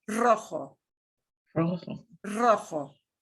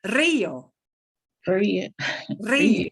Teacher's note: if a single R is the first letter of a word, it's still going to sound like that strongly trilled double R